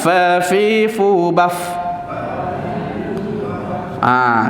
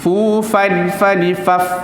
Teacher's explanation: Fa sifat dia hamas iaitu berangin. Okey. Gigit bahagian bibir, gigi atas kenakan bahagian bibir bawah. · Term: huruf fa